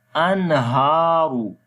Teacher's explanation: So we make izhar halaqi here. We make the clear sound of noon without gunna. Anharu. Ra we read in heavy sound.